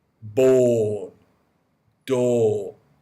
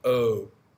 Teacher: it comes more down from in the throat, the sound or. Whereas O is more at the front of the mouth.